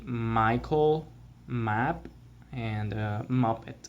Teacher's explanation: It is called also the bilabial nasal sound, which means that you use both of your lips and the air comes out your nose